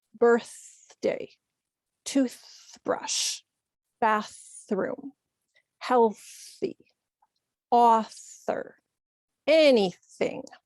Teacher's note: when we find it in the middle of words, we're generally going to use the unvoiced or the quiet sound.